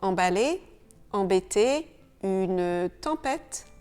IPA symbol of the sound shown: ɑ̃